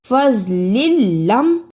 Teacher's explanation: فضل لم، پہلے لام کے نیچے تنوین، جبکہ دوسرے لام پر شد اور زبر ہے۔ تنوین والے لام کو زبر شد والے لام سے ملانا ہے